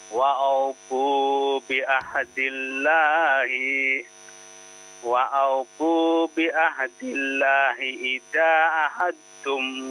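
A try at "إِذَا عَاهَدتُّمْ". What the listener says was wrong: Idza a-nya dua harokat, ya, ada tanda panjang. Ada dua harokat.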